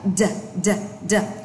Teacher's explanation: âm d nhưng mà bật mạnh ạ